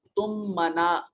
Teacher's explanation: قَضَيْتُم میں یا ساکن ماقبل مفتوح یا لین ہے، اور تم منا یہ 2 میم ایک ساتھ اکٹھے ہوئے ادغام مثلین ہے، 2 حروف ایک ہی طرح کے اکٹھے ہوئے، پہلا ساکن دوسرا متحرک تو پہلے کا دوسرے میں ادغام کر دیا